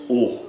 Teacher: O é sempre fechado e é sempre também longo.